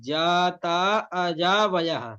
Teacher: जाता में जो जा है ना वो अनुदात है